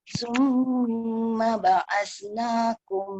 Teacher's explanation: Mim sabdu tu bagi peluang dia berdengung.